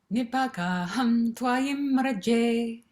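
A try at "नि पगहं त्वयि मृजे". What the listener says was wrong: Good, much better.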